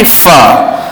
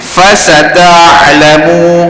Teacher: Ada juga ustaz pesan beberapa pembaca guna sebut fa tu dengan satu harakat penuh dan kemah. Di mana makhrajnya 4 batang gigi atas kena pada bahagian bibir bawah. Tolak angin. Kemudian masuk suara fa. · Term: huruf fa